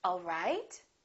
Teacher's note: the word right the pitch would go up all right listen to the difference again all right all right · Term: rising intonation